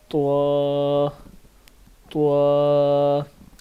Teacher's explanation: زبان کی نوک کو اگلے دانتوں کی جڑ کے ساتھ لگائیں تو طوا لفظ تا ادا ہوتا ہے